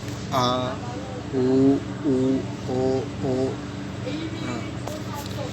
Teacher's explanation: जिन स्वरों के उच्चारण में जीभ का पक्ष भाग कार्य करता है, यानी पीछे वाला भाग कार्य करता है, उसे पश्च स्वर कहा जाता है।